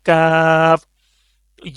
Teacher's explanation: यह जबान का जो दरमियान वाला हिस्सा है ऊपर वाले तालू जो सख्त वाला तालू का हिस्सा है उसके साथ लगाना है तब यह लफ्ज अदा होगा